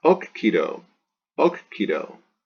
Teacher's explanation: It's only got one consonant. It is a short penult. The accent wants to jump back on the antepenult.